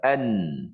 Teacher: Adapun sifat nun tu sendiri tak boleh dipisah daripada sifat dengung. Pasal nak jadi nun tu mesti ada suara ke hidung. · Sebab suaranya mesti ke hidung. Suara ke hidung itu orang panggil gunnah. Orang panggil dengung. Cuma nisbah dengung itu tak sampai dua harakat.